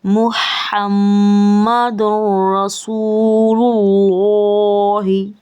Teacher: اور لام چونکہ اللہ تعالیٰ کا اس میں جلالت ہے تو یہ حرکت اس کے اوپر زبر کی ہے, کھڑا زبر کی, تو اس کو میں نے موٹا کر کے پڑھا